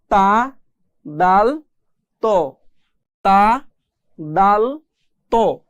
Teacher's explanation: জিহ্বার আগা সামনের উপরের 2 দাঁতের গোড়ার সঙ্গে লাগিয়ে পড়তে হয় তা দাল ত